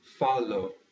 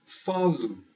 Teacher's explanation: when this is at the end of a word, usually you do not say O, as in falo. You say U, as in falu.